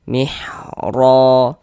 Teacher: Huruf ra itu kalau dia memiliki harokat fathah nih, baris satu di atas huruf ra memiliki harokat fathah, maka ini huruf ra yang memiliki harokat fathah kita baca tebal, kita baca tafkhim